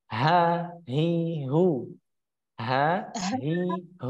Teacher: kalau huruf H itu tenggorokan bagian pangkal atau tenggorokan bagian bawah.